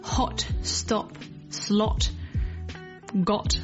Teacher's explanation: In, for example, American English, the word stop might be more pronounced as stop rather than stop. So this is a very round shape with the mouth, with the lips slightly pushing out and the tongue just slightly relaxed and flattened in the mouth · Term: short O sound